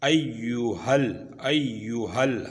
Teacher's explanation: जो हा था वो इस लाम के साथ हमने अगली लाम के साथ मिलाना है, इसलिए कि इस लाम के ऊपर जो है ना मुड़ी हुई शद है। तो पिछली जो हलक से निकलने वाला हुरूफ हा है उसको हमने इस लाम के साथ मिलाना है